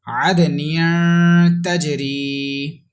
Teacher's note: Next word, there is dal. Dal is kalkala letter with echo sound. There is ikhfa with gunna, and there is yamadda stretching equal to 1 second.